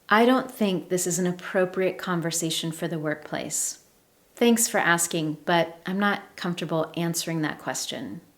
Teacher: the tone of my voice has changed, it's lower, and I use falling intonation at the end of my sentences.